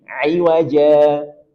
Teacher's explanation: kaidah keenam apabila huruf terakhir berharakat tanwin fathah atau fathatain maka tanwin berubah menjadi fathah sambil dibaca panjang dua harakat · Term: mad iwad